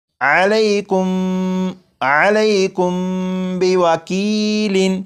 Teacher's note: جب میم ساکن کے بعد با آ جائے تو میم ساکن میں غنہ کر کے پڑھیں گے